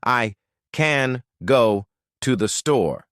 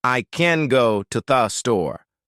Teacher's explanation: The words can, to, and the become tiny and lazy. The words go and store become huge and clear. When you master the lazy schwa sound, the important words shine like diamonds.